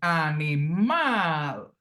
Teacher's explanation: phonetically the stress syllable is the last syllable animal here so oxitone words are those that are stressed on